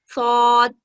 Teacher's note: زبان کو سامنے والے نچلے دانتوں سے لگا کر تفخیم کے ساتھ پڑھا جاتا ہے۔ زبان کو نیچے والے دانتوں کے ساتھ لگا کر تفخیم کے ساتھ ادا ہوتا ہے۔